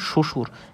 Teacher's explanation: যে বটা উচ্চারণ হয় না অর্থাৎ শ্বশুর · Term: অন্তস্থ ব